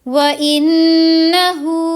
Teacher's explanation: نون کی آواز کو ناک میں لے کر جائیں گے، تھوڑی دیر وہاں پر اسٹیئر کریں گے، اور پھر ہاں الٹا پیش ہو ہے نا، تو یہاں پر تھوڑی دیر کے لیے آواز کو لمبا بھی کریں گے۔